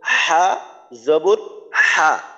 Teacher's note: হা হলো 2 নম্বর মাখরাজ হলকের মধ্যখান থেকে